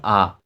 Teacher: যে সকল স্বরধ্বনি উচ্চারণের সময় মুখবিবর বিবৃত বা প্রসারিত হয় তাকে বলা হয় বিবৃত স্বরধ্বনি